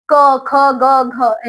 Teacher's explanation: इन सब वर्णों का उच्चारणसार कंठ है। मतलब कि गले से बोले जाते हैं। क, ख, ग, घ यहां पे आपको जोर फील होगा।